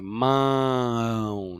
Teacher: Ele é uma um símbolo de nasalização para você falar, para você entender que esse a aí ele vai ser pronunciado mais nasal aqui pelo nariz